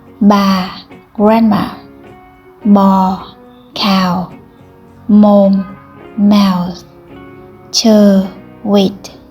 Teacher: The tone huyền or the tone deep indicates a falling tone pronounced with a lower pitch.